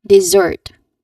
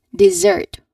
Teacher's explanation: dessert with emphasis on the second syllable